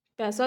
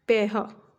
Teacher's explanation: ਜਿਵੇਂ ਅਗਰ ਸ਼ਬਦ ਲੈ ਲਈਏ ਆਪਾਂ ਪੈਸਾ, ਤਾਂ ਪੈਸਾ ਨੂੰ ਕਿਸ ਤਰ੍ਹਾਂ ਬੋਲਣਗੇ, ਪੈਹਾ, ਤਾਂ ਪੈਹਾ ਬੋਲਿਆ ਜਾਂਦਾ। ਤਾਂ ਸ ਧੁਨੀ ਦੀ ਜਗ੍ਹਾ 'ਤੇ ਹ ਧੁਨੀ ਦਾ ਪ੍ਰਯੋਗ ਵੀ ਅਕਸਰ ਕੀਤਾ ਜਾਂਦਾ